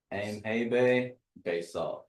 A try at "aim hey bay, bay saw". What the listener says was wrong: Yeah, you don't say it real quick like that. You don't say aim hey bay. Because there's on here, if you look here, it says EM for aim, that hey, and then there's a colon behind it. So that colon says aim hey bay. Aim hey bay, bay saw.